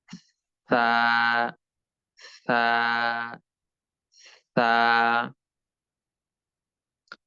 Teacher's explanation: সকলেই নিজ নিজ জায়গা থেকে জিহ্বা বাহিরে বের করে উপরের দুই দাঁতের আগার সঙ্গে আলতোভাবে যুক্ত করে ভিতর দিক থেকে বাহিরের দিকে ধীরে ধীরে আস্তে আস্তে বাতাস বের করে নরম ভাবে সা অক্ষরটি উচ্চারণ করুন।